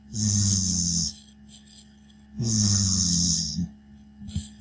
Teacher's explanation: Teeth together and the sound coming out through your teeth. Your voice through your teeth.